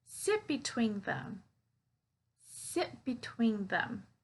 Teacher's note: that sit, I'm not pronouncing that T. So I'm connecting sit to between.